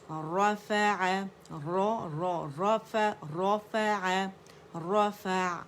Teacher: اس میں توسط عین میں شو کریں گے، جھٹکا نہیں دیں گے، ٹھیک ہے، اور نہ شدہ پیدا کریں گے.